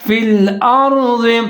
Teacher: ضاد کے نیچے زیر ہے، فی الارض، ضاد کو موٹا پڑھنا ہے